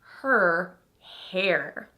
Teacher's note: So hair is not typically using an R-colored vowel.